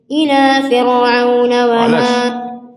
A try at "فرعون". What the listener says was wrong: فرعون مش صح، كسر قبلها ترقق فرعون.